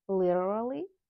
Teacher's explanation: Literally, flap T and R sound, literally